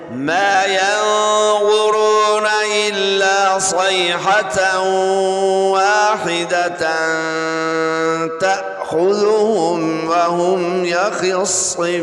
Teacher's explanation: صیحۃ، یا ساکن سے پہلے زبر ہو تو یا لین ہوتی ہے. یہاں تنوین کے بعد واو آ رہی ہے، ادغام یرملون ہوگا، یعنی غنہ کر کے پڑھیں گے. واحدتاً، یہاں پہ اخفا ہو رہا ہے، تنوین کے بعد تا آ رہا ہے حروف اقوام سے، لہذا یہاں بھی غنہ کر کے پڑھیں گے.